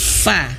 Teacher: Nah, tapi bibir bawah sini bisa perhatikan, bibir bawah sini, perut bibir bawah yaitu yang bagian dalam itu menyentuh ujung gigi seri atas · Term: huruf fa